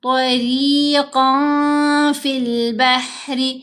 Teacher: تو ہم نے نون کو ظاہر نہیں کرنا، نون کو ناک میں چھپانا ہے۔ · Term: احفا